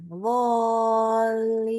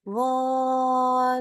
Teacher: Jadi baca Al-Fatihah tadi, baca obotnya 6, lalu pas ketemu lamnya, pas masuk ke huruf yang ditasydidkannya, yaitu lam, kita naikkan nadanya sedikit. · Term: naber